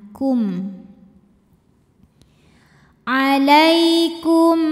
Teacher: maka mim sukun ini kita bunyikan dengan h izhar artinya jelas jadi masih dengan bunyi asalnya yaitu m ya dan tidak ditahan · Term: izhar syafawi